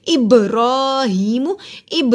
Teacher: با پہ قلقلہ ہوا کیونکہ با جزم کی صورت میں ہے۔